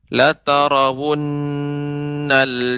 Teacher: Nun bertasydid, lebih diberi jeda, lebih diberi tempo, bukan jeda. Tempo dalam pengucapan nun bertasydid agak lebih sedikit lama.